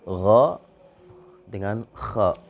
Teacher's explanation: Dua huruf yang keluar dari ujung tenggorokan ataupun adnal halqi yaitu huruf gha dan kha.